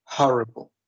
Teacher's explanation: I count 3 syllables, and I think the stress is in the first one.